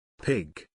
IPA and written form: pɪɡ (Pig)